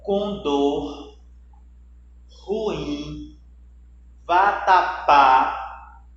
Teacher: Então, quando eu tenho a última sílaba na palavra, a última sílaba ela é a que tem mais força, eu tenho uma palavra oxítona